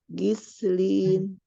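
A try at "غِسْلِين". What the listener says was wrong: Bukan gi, tapi ri. Ghislin.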